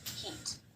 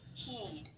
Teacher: in the word heat, the E vowel is typically said for the shortest duration, heat. And in the word heed, the E vowel is typically held out a little longer